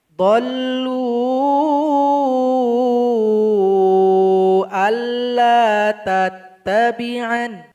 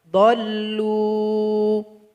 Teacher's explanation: Tapi kalau berwakaf di ayat 92, tanda bendera enggak boleh dipakai. Jadi lam mesti dipanjangkan 2 harokat saja.